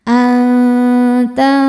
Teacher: Selanjutnya ada hukum ikhfa hakiki awsat karena nun sukun bertemu huruf fa. Cara bacanya nun disamarkan ke fa disertai dengung. Samar dan dengungannya sama besar ya. Jadi kita sudah menyentuh makhraj huruf fa tapi tidak menekan.